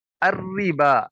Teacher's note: الربا، دیکھیں را کے نیچے زیر ہے، اسے باریک کر کے پڑھیں گے، اور با کے اوپر کھڑی زبر ہے، اس کو ایک الف کے برابر لمبا کریں گے